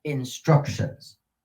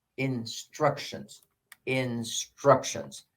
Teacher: on syllable 2 is the accented syllable in this particular case